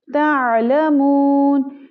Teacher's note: आइन की आवाज़ को हलक से निकालेंगे।